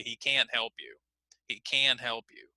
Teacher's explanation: we often hear it more clearly so if you notice here we would put the focus on the word can't